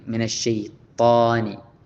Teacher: കനപ്പിച്ചുകൊണ്ട് താ പറയേണ്ടത്. മിനശ്ശൈത്വാനി എന്ന് കനപ്പിച്ച് വായിൽ കാറ്റ് നിറച്ച് പറയേണ്ടതുണ്ട്. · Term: ഇസ്തിഅലാ